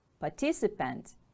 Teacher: Stress is on the second syllable.